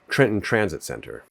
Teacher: words with a TR string end up making a ch sound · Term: anticipatory assimilation